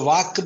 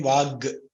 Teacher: Ka became Ga. It is the same sthana, but the prayatna and other things changed, slightly changed. So Vak became Vag.